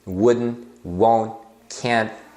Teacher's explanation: você coloca a língua lá no lugar que você faz o t mas sem sair aquele chiadinho